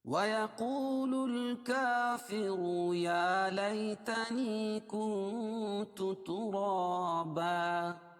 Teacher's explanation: ملانے کی صورت میں اس را کو پر پڑھیں گے